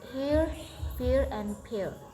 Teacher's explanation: British English complex vowel sounds E as in here is this is a diphthong in B starting with a mid-central vowel and gliding towards a slightly more open mid position.